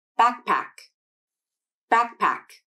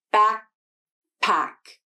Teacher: can happen first the k sound can be unreleased this means the back of the tongue makes contact with the soft palate and then it stays there there isn't a release of the tongue the tongue remains in that position and then you would transition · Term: unreleased k sound